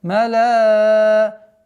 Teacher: Здесь у нас долгота в размере 4 огласовок даммы удлиняем.